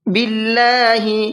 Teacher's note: اللہ کے لام کو باریک کر کے پڑھنا ہے اس لیے کہ اللہ کے لام سے پہلے زیر ہے۔